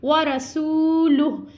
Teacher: واو ساکن سے پہلے حرف پیش ہے, واو مدہ ہے, ہم نے اس کے کھینچ کے ادا کرنا ہے